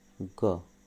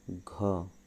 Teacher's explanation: अल्प प्राण में मुंह से कम हवा बाहर आ रही है ग कहने से, और घ कहने से अधिक हवा बाहर आ रही है